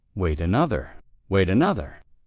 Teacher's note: the t also becomes a stop t and kind of elides with the next word because it starts with a vowel. So it again it sounds like a d or it has this stopped t sound.